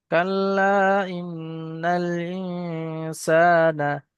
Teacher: দুই থেকে তিন আলিফ পরিমাণ কম সে কম টান হবে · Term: মাদ মুনফাসিল